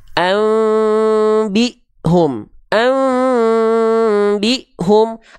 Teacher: jadi disamarkan ke mana bunyi annya disamarkan ke bunyi m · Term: iqlab